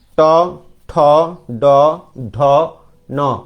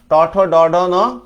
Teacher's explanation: এভাবে উল্টে এসে এযে শক্ত তালু অংশটা যেটা আছে এখানে এসে টাচ করতেছে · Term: মূর্ধ